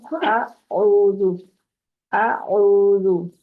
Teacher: हमजा को सिंपल आपने इंतहाई हल्क से अदा करना है और आइन को वस्ते हल्क से अदा करना है